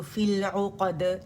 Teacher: ये मद लेटर जो है या सुकून के साथ ड्रॉप हो जाएगा और फ़ी की कसरा लाम के साथ मिल जाएगी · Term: इज्तिमा साकिन